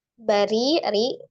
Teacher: Ro, kasro dibaca tipis. · lanjut Bari RI ro kasra Ri Ri dibaca tarki ditipiskan Heeh ro kasra dibaca tipis